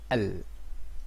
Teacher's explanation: L, automatically your tongue touching your upper teeth.